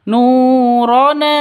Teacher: Nu panjang 2 ketukan karena ada wawu mati diawali dengan dhamma mad asli.